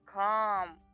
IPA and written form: kɑːm (Calm)